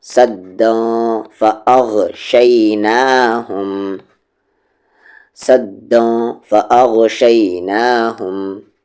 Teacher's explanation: تنوین کے بعد فا ہے، اخفا ہوگا یعنی دن نہیں داں